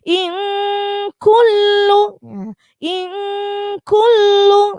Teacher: Ikhfa itu artinya samar, maka samar itu artinya ketika kita mendengung sudah siap-siap masuk ke huruf kaf.